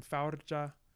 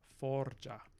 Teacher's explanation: we are going to take that ow diphthong and we're going to monophthongize it.